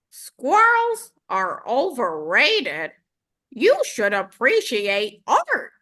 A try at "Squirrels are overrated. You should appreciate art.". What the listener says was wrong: Can that be a little more like, Psh, squirrels are overrated? Who cares about squirrels? I mean, this is art, man. You seem kind of offended there, like snippy and offended.